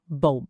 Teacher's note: E o B no final é bem fechadinho, oclusivo.